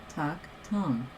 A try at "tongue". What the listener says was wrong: No, it's higher. Like, listen to it. You're doing it.